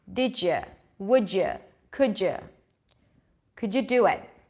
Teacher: whenever there is a D and right after there is a u sound we get a gist sound